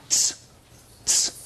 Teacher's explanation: Okay, one thing is that this sound right here, this is a sound we don't have in English. It's one sound. It's an affricate. It's ts, ts.